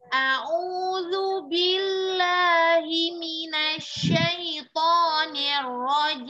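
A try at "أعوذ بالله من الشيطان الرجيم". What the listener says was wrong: Coba jangan mengayu jim, tapi jim lurusin aja. Jim. Ya, jangan masuk hidung jim ya. Jim lurusin suara jim.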